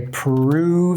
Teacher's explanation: So the lips come forward for the P sound. We're gonna say prove, and we're gonna go into that O shape.